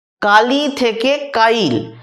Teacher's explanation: কালি থেকে কাইল কালি এই শব্দটাতে ছিল কি ল যুক্ত হসই কিন্তু উচ্চারণে হয়েছে হসই যুক্ত মানে কাইল মানে আগে হসই তারপর ল অর্থাৎ আগে ল তারপর হসই ছিল কিন্তু ল এর সঙ্গে যে হসটা ছিল সেটা আমরা ল এর আগেতে নিয়ে চলে এলাম অর্থাৎ ল ব্যঞ্জন ধ্বনি ব্যঞ্জন ধ্বনির আগেতেই স্বরধ্বনিটাকে নিয়ে চলে এলাম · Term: অপিনিহিতি